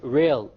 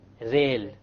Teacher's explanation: The English R comes from the middle of the tongue. Whereas the Arabic rah comes from the tip of the tongue along with the incissors or the gum behind the incissors